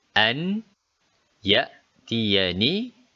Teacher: bunyi huruf nun ini tadi dimasukkan ke dalam bunyi huruf y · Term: Idgham Bighunnah